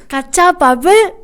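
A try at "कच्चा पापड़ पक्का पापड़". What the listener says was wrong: Not bull, it's papad. Kacha papad, pakka papad. And you have to say it like, fast.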